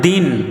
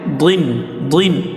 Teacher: দাল দুই জের দিন এটা পাতলা করে আর এটা হচ্ছে দরদ দুই জের দ্বীন দ্বীন এটা মোটা করে